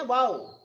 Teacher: अब यहाँ पे wow पे भी आपका कहीं ना कहीं राइज है. wow को तो आप ऊंचे स्वर में बोलेंगे ना